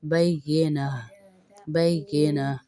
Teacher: हुमुल बय्यिना या को सख्ती के साथ ज़रा पढ़ेंगे और ता का वक्फ हा में तब्दील हो जाएगा